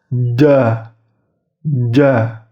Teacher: tengah lidahnya menyentuh langit-langit atas. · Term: huruf Jim